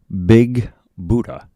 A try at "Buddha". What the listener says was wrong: It's Buddha. 2 D's, no T's. Buddha.